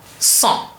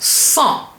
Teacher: And the en, which is en, together makes it become a nasal vowel en, cent. So we have cent, 100.